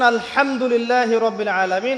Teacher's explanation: এই হা এর মাখরাজ কোথায়? হা এর মাখরাজ কোথায় বলেন একজন? কণ্ঠনালীর মাঝখান থেকে। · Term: হায়ে হুত্তি